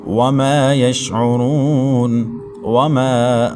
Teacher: میم کے بعد الف مدہ ہے، ایک الف تک کھینچیں گے